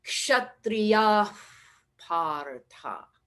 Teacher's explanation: whenever the visarga precedes a P, especially a P, but also a B, then we treat the visarga as though we were blowing a feather